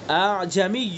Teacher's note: ایک تو پہلا حمزہ تحقیق سے پڑھا جاتا ہے، اور دوسرا حمزہ تسہیل کے ساتھ پڑھا جاتا ہے۔ اور یہ دوسرا حمزہ جو ہے، دوسرا حمزہ یہ تسہیل کے ساتھ اس کو پڑھنا واجب ہے۔